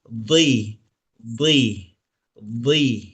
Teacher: Dod itu sebetulnya huruf tebal. Tetapi karena vokalnya kasroh, maka terjadi kebutuhan yang untuk dibaca tipis itu. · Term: peralihan dari tebal ke tipis